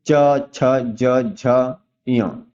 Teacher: आपका जो जीभ है, जीभ आपके तालु को स्पर्श करता है। तो देखिए तालु को स्पर्श कर रहा है मतलब इसका उच्चारण स्थान क्या है, तालु है।